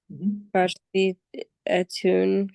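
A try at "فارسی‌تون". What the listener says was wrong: you don't need the A anymore because it has already a long E. Farsimun, Farsitun.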